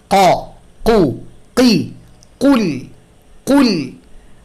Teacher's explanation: কুল এইটা উচ্চারণের জন্য জিহ্বার শেষাংশ ব্যবহার করতে পারতে হবে। বাংলা ভাষায় যেহেতু এই ধরনের সিমিলার কোনো উচ্চারণ আমাদের নাই, তাই এটা আমাদের ভুল হয় অনেকেরই। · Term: কফ